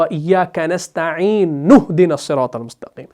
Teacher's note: کنستعین کے نون کو آپ براہ راست اس ہا کے ساتھ ملاتے ہیں، اس حمزہ کو ڈراپ کر دیتے ہیں وصل کی صورت میں۔ تو جب آپ وصل کرتے ہیں، روانی پڑھ رہے ہوتے ہیں، تو یہ حمزہ ڈراپ ہو جاتا ہے۔